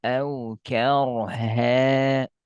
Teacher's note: Tebal ro karena diawali fathah.